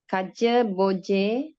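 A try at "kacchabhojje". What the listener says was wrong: here when you read second line, not Kajabojje. SH sound.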